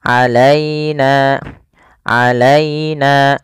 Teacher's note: ya di sini ya-nya sukun, yaitu dilembutkan di dalam melafalkannya. · sempurnakan di lafal ynya jangan sampai terdengar huruf e